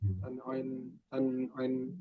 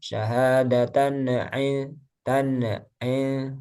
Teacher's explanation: ya jadi alirkan, jangan dilepas lidahnya, syahadatan il sampai ke ain langsung, syahadatan il gitu ya, tan ain.